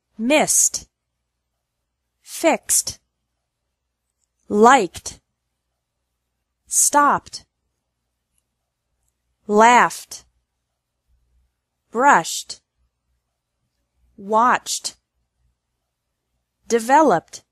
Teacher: e d is pronounced like T with no extra syllable after verbs ending in s x k p f sh and CH sounds